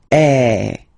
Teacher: the sound is really open and normally your mouth should be opened a little bit more